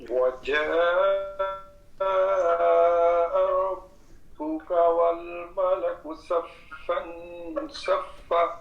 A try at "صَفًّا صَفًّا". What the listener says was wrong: صفا تھوڑا لمبا کریں، جب وقف کریں گے آگے الف پڑھا جائے گا۔ ہاں ایک ساتھی اور پڑھ لیں پھر آگے چلتے ہیں۔ وجيء يومئذ بجہنم.